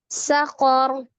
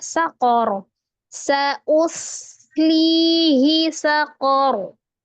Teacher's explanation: Maka tidak berlaku mad, maka hi-nya dibaca pendek ya. Sakor, kofnya ditebalkan, oronya juga ditebalkan ketika disukun ro fathah, ketika diwakafkan ro fathah menjadi sukun dan dibaca tebal karena sebelumnya berharakat fathah.